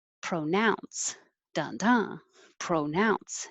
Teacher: speakers i've heard that as well 22 is pronounce pronouns and it can be pro or pra because it's not stressed · it can be pro or pra because it's not stressed, but now, nounce is the stressed syllable